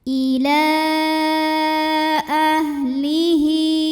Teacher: Mad tabi'inya adalah fathah panjang pada kata ila, hamzahnya a pada kata ahlihi. Maka lamnya dipanjangkan boleh 4 boleh 5 harokat. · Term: mad jaiz munfasil